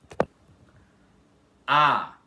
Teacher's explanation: quando vocês falam A, o ar só sai pela boca